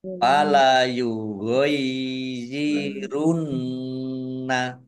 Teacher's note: Nun tasdid dibaca gunnah atau mendengung, ditahan dua harokat biar tampak dengungannya.